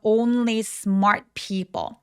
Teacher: 오우까지 굉장히 또렷하게 어우 입술 우까지 내밀어 주시고요. N과 l은 다 또렷하게 발음해 주셔야 돼요.